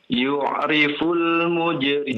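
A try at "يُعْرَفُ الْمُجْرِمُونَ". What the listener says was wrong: nah coba, coba perhatikan harokatnya, coba lihat. Di atas bukan di bawah ya.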